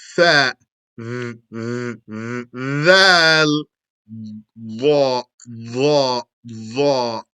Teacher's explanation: The Dha, Dhal, and Tha are from the edge of the tongue with the edge of the top front teeth.